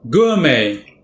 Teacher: 2 syllables. The first syllable is stressed, but note the way the first syllable is spoken.